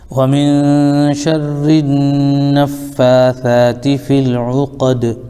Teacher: شَرِّ النَّفَّاثَاتِ فِي الْعُقَدِ، یہاں پر دال بھی ساکن ہے اور دال حروف قلقلہ میں سے ہے، اس کی بھی آواز لوٹے گی